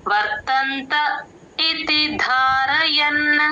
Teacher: ధ కి మహాప్రాణం ఉంది గమనించండి వర్తంత ఇతి ధారయన్ ఆ లాస్ట్ లో ఎన్ లు యూజువల్ గారు చెప్పకుండా